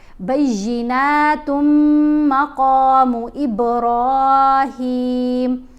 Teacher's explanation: جیسے یہاں بیناتن اگر پڑھیں گے تو تن میں نون کی آواز ہے وہ خاموش ہو گئی، کیونکہ تا کو ہم نے ملانا ہے اب میم کے ساتھ غنہ کرتے ہوئے